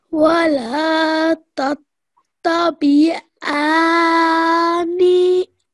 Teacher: Over here, I know students are finding a bit more difficult with this, but all you need to remember that because this is a noon mushaddad, you need to join this ayin sound to the noon, but you have to hold that nasal sound in your nose as well